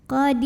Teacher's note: Qadir ya, jadi ini ra-nya tipis kalau berhenti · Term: tarqiq